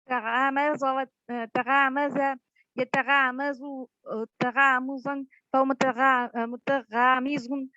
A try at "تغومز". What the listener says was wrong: No, the long a sound change into a long u sound. تغومز. You said تغامز.